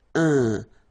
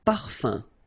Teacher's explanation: So remember, even if you've got this UM like that, phonetically it's exactly the same thing as if you would have UN. So it's nasal and it's un. So it really goes in your nose. You don't pronounce the M at all.